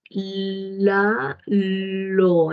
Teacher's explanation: ¿Usted siente cómo el aire sale por un lado de su lengua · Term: lateral